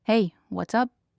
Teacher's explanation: Hey, what's up? has a rising tone at the end signaling friendliness